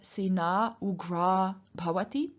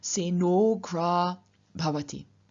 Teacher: changing into a plus u, giving us o, and then two words merging, Seno gra bhavati.